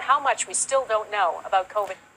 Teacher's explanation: So the N sound is almost elided and the T sound also almost elided